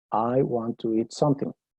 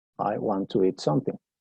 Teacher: Si pones el énfasis en inglés en something, es como si lo dudaras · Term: énfasis al final